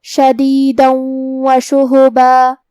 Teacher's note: واو حروف الادغام بغنہ میں سے ہے، اور ادغام کا معنی ہے حرف کو حرف میں داخل کرنا، تو ہم یہ تنوین کو واو میں ملا کے غنہ اور تشدید کے ساتھ یہ حکم کو ادا کریں گے